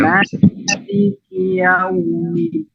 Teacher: Jadi dua harakat ya-nya. Tapi yang ingin kita panjangkan adalah huruf lin, huruf wawnya.